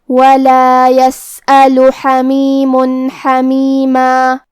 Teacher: حا کی ادائیگی حلق کے درمیان والے حصے سے ہے، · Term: حرف الحا